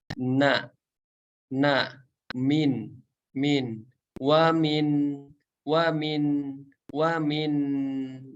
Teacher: Nun sukun, tempat keluarnya dari dari ujung lidah kita menempel ke langit-langit atas